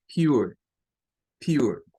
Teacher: Esta es de las palabras en donde la E, ¿verdad? La E al final no suena, es muda, pero traslapa un sonido, digamos, hacia la R, en este caso, que se convierte en un schwa.